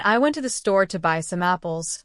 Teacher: in I went to the store to buy some apples, the stress is on went, store, buy, and apples. If you stress to or the, it sounds strange to native speakers.